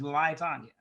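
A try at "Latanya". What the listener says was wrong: It's Lie Tanya. No emphasis on the lie part.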